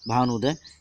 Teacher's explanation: यहाँ पे छोटा ऊ और छोटा ऊ मिलके बड़ा ऊ हो जा रहा है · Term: दीर्घ स्वर संधि